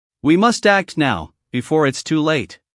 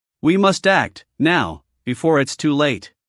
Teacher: this time pause right before now and after too late